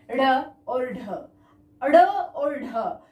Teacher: उत्क्षिप्त यानी जिनको बलपूर्वक थोड़ा सा जोर देकर बोला जाता है, जो झटके के साथ बोले जाते हैं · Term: उत्क्षिप्त वर्ण